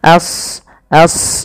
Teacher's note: Jangan as, jangan sin tapi as as ya. A-nya tipis, shadnya tebal. Karena shad punya sifat huruf isti dan idbaq.